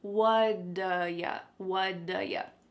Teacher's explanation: that T at the end of the word what is going to change to a D sound.